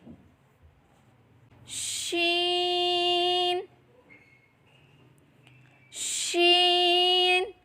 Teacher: زبان کے درمیان اور تالو کے درمیان سے ادا کریں